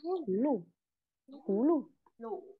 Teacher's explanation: mình sẽ chỉ đọc một nửa thanh thôi